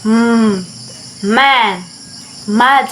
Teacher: Keep your lips closed and let the sound come out through your nose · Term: bilabial